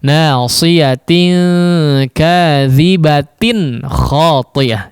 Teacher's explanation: Nasiyatin kadhibatin khati'ah ya. Tanwinnya diizharkan, artinya ada pengucapan nun sukun yang tidak tertulis di situ.